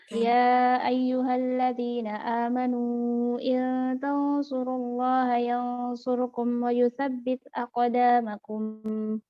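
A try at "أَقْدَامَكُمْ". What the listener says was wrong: Nggak boleh tambahan aqdamakum, nggak boleh gitu. Aqdamakum. Ekornya mimnya soal jadi.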